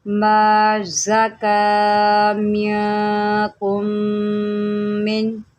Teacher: زا کو سیٹی کے ساتھ پڑھیں، زا حروف صفیریہ میں سے ہے اور کاف کے اوپر کھڑا زبر ہے، ما زکا منکم من، من۔